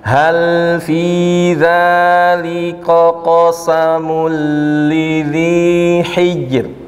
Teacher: kesalahan huruf kafnya dibaca tebal keseret dengan huruf qaf yang isti'la